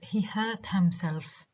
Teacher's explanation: is an object is on its unstressed in this case and the only stress in this sentence is on the verb hurt